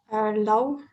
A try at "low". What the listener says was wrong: And it's what I hear is law. Law is L-A-W, and that's la loi, right? But here it's pronounced low. Low.